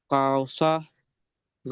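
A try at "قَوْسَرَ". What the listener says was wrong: তা টান হয়ে গেল, জলদি পড়তে হবে, কাও সার।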